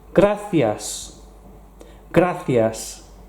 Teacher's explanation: You'll notice the C and the I makes a th sound